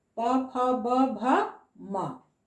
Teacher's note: इसका उच्चारण स्थान होठ है, यानी दोनों होठ हमारा स्पर्श करता है, छूता है।